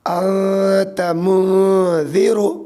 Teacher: اخفاء آوے تو نون کی آواز کو ناک میں چھپا کر پڑھنا چاہیے ، یعنی نون زبان تالو سے ہٹا کر، یعنی نوک زبان